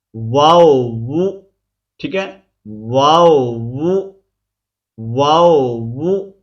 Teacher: ہونٹوں کو گول کرتے ہوئے اوپر کی جانب کھول کر درمیانی سی مد کر کے پھر سے ہونٹوں کو گول کرتے ہوئے باریک آواز میں پڑھیں گے